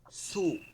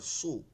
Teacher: সু তখন আর সু বলা যাবে না তখন মোটা করে সু ঠোঁট দুইটা একটু গোল হয়ে যাবে জিহ্বাটা একটু মোটা হয়ে যাবে